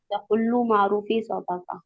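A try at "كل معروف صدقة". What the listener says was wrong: हाँ, बड़े काफ से मत पढ़िए, छोटे काफ से पढ़िए इसको, कुल्लू मारूफिन सदाका।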